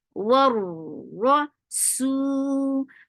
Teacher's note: Ra will be heavy because ra is with fatha.